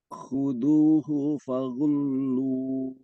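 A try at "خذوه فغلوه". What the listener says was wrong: Kho-nya lebih jelas. Khudhuhu.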